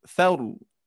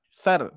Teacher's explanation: Nah, maka dari itu ketika kita diwakafkan huruf ro ini akan menjadi sukun. Dan huruf ro ini termasuk huruf yang tebal ya ketika sebelumnya baris fathah